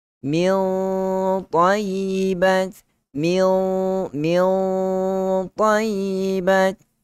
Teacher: gunnah yang tebal kerana bertemu dengan huruf ta yang padanya ada sifat itbaq dan juga ada sifat isti'la